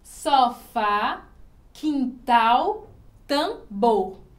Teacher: As oxítonas têm essa sílaba mais forte na última sílaba.